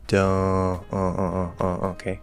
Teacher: instead of don't, and keeping the O through the mouth, you nasalize that O partially. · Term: partially nasalize